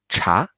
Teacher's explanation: the tone mark is tells you to rising to go up